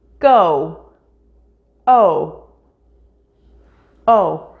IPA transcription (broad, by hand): oʊ